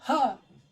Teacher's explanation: हा बोलेंगे तो हा कहाँ से होता है, कंठ से होता है